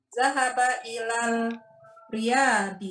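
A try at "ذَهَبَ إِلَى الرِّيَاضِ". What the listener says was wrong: Ilar, langsung roknya huruf syamsiah. Ilar riyadi.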